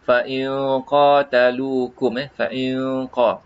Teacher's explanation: Di sini ada qalqalah, fa in qatalukum, kalau ikhfa, nun mati bertemu dengan qaf, qaf ini fa in qatalukum, fa in qa, kita dekatkan bunyi ini, bunyi nun mati itu menghampiri huruf qaf